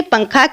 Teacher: تنوین یا نون ساکن کے بعد حروف اخفاء آ جائے تو نون کی آواز کو ناک میں چھپا کر پڑھنا چاہیے، یعنی زبان کی نوک تالو سے ہٹا کر، جیسے اردو میں پنکھا کے نون کو چھپا کر پڑھتے ہیں.